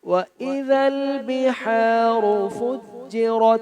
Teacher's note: وَإِذَا الْكَوَاكِبُ انتَثَرَتْ وَإِذَا الْبِحَارُ میں ذال پھر سافٹ پڑھیں گے، بحارو کی ہا کا خیال کریں، را کو موٹا پڑھیں گے اور فجرت میں را کو موٹا پڑھیں گے